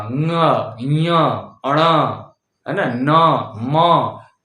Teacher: अब इनका उच्चारण स्थान सेम है, जो इनके वर्ग का उच्चारण स्थान है वही है, किंतु पंचमाक्षर बोलने वक्त हम नासिका का प्रयोग कर लेते हैं, नाक का